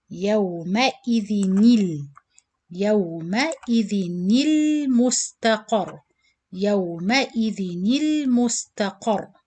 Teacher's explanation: To join this noon sakin with lam qamariya, you have to change this noon sakin into noon kasra.